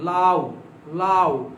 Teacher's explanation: এই উটা আমরা ছোট করে দিচ্ছি। এখানে এই উটা হচ্ছে 100% অর্ধস্বর, এটা হচ্ছে কি বলতো, এটা অর্ধস্বর।